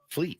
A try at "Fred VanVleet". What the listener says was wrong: not Van Fleet. VV, double V.